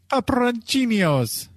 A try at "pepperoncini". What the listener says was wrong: No, there's no yos. Pepperoncinis. Pepperoncini.